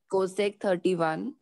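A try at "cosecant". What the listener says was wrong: कोसेकेंट कोसेक नहीं बोलना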